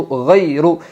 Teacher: یائلین کو نرم آواز کے ساتھ جلدی اور معروف پڑھے